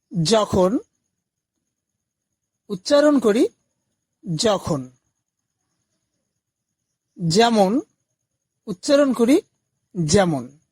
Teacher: অন্তস্থ জ এবং বর্গীয় জ এর উচ্চারণ একই